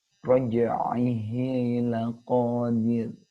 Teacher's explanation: Seperti ro, ada getarannya. Cuma sangat sedikit dan sangat tipis, lembut sekali.